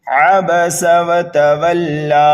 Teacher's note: پہلی آیت پر ہم وقف کریں گے تو دیکھیں گے لام کے اوپر کھڑا زبر ہے۔ اگر وقف کریں گے تو لام کو صرف ایک الف کے برابر کھینچ کر کے پڑھنا ہے۔ کھڑے زبر کے اوپر مد بھی دکھائی دے رہا ہے، اگر وقف کر دیا تو یہاں پر ہم مد نہیں کریں گے، صرف ایک الف کے برابر کھینچیں گے لام کو۔ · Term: وقف بالسکون